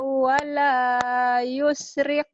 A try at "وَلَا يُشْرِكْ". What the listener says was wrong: Yusyrik. Yusyrik. Shin ya. Shin gede. Wala yusyrik.